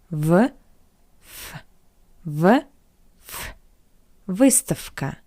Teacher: conses v stands before the voiceless consonant that's why we read we pronounce v as its voiceless analog f